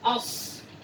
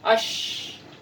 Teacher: Dia harus dibedakan ash dan as ya. Nah, untuk huruf shin itu lebih besar nafas yang dikeluarkan ya, ash.